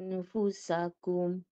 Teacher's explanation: walaupun kita dengung tapi huruf selepasnya tu kita kena standby bunyi kalau kita bertemu Fa bibir macam Fa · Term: dengung ikhfa